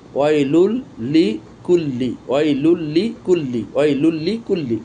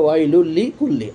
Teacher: বানানের জন্য আমি এভাবে একটা পেশকে বাদ দিয়েছি, কিন্তু উচ্চারণের সময় কিন্তু এই চলে এসেছে, ঈদগাম হয়ে গেছে লামের ভিতরে, অর্থাৎ তানবিন ঈদগামে লামে ঢুকে গেছে, কিন্তু গুন্নার কোনো অবকাশ নেই। কেননা তানবিন অথবা নুন সাকিনের পর যদি লাম আর র আসে ঈদগাম হয়, কিন্তু গুন্নার কোনো অবকাশ থাকে না।